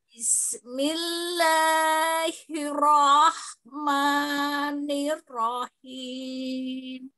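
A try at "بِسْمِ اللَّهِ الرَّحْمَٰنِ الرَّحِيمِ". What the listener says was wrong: Lafdul jalalahnya, lamnya, dua harakat saja, jangan panjang-panjang. Bismillah, gitu saja. Ro-nya bisa ditebalkan. Ro bisa begini.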